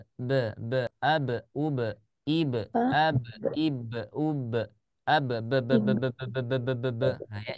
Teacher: jadi suaranya itu harus ada di syafattin